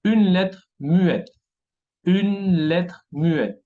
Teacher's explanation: No se pronuncia la E final